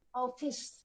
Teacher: ઓફિસ, એમાં તમે આમ ઓફિસ આમ નો લખેલું હોય, ઓફિસ આ વિવૃત ઉચ્ચાર કહેવાય, પોળો ઉચ્ચાર કહેવાય